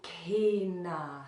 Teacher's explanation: there's also that little bit of aspiration that little bit of breath leanness there so k na so there's a dot under the